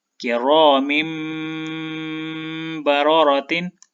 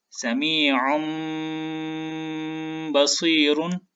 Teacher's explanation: तनवीन के बाद बा है तो हम इस तनवीन को मीम की आवाज़ के साथ मिलाकर गुन्ना करेंगे